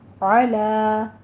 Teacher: علا عین وسطے حلق سے ادا کریں گے اور لام کو موٹا نہیں پڑھنا